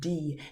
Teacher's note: when you say d the tip of your tongue touches above your top teeth onto that roof of your mouth